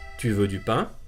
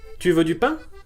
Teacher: The intonation will rise at the end of the question.